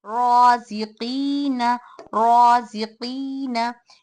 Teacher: कौफ या ज़ेर क़ी, रॉ, यहाँ पर रॉ को भी मोटा पढ़ेंगे क्योंकि इस पर ज़बर है